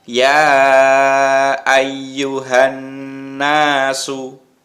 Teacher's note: Berikutnya kalau yang dicetak merah, ya yang di atas itu kalau ada merah-merahnya itu menunjukkan bacaan gunnah. Bacaan gunnah itu adalah bacaan dengung. Ya, mendengungnya 2 harokat berarti agak panjang.